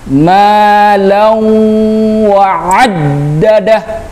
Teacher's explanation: Artinya harus didengungkan, dimasukkan ke huruf waw sambil didengungkan. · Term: idgham bil gunnah